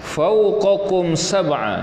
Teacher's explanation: Ini adalah izhar syafawi ya, dizahirkan sebutan mimmati tanpa dengung